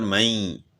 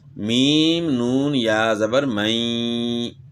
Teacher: بیچ میں غنے کی آواز جو ہے نا اپنے وہ لازمی نکالنی ہے، 1 الف کی مقدار کے برابر غنہ ہوگا۔